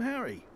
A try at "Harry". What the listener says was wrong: You pronounce the H. You pronounce the H. The H.